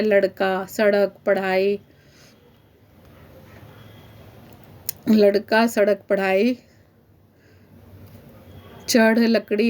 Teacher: ड और ढा का उच्चारण स्थान जीभ के झटके से, इसको जीभ झटके से के साथ इन्हें फेंकती है, इसलिए इनको उत्क्षिप्त व्यंजन कहा जाता है। इनसे कोई भी शब्द शुरू नहीं होता, बाकी ये कहीं पर भी आ जाते हैं, जैसे लड़का, सड़क, पढ़ाई, लड़का, सड़क, पढ़ाई, चढ़, लकड़ी आदि।